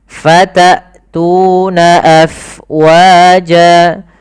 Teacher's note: jelaskan suara hamzahnya karena dia punya sifat yang mencolok, yaitu jahar dan syiddah